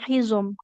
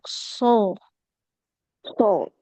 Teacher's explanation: seperti sin, tapi tebal. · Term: Huruf shad